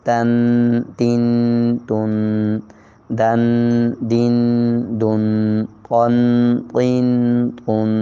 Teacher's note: زبان کی نوک اوپر کے 2 دانتوں کے جڑ میں